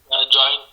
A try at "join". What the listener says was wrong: Not John, it is join. Instead of H, you put I.